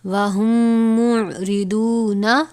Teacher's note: میم ساکن کے بعد دوسری میم آئی ہے، یہاں پر ادغام شفوی یعنی غنہ ہوگا